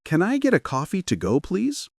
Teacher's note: The tone goes up slightly at the word coffee and drops softly at the end with please. It's friendly, confident, and polite.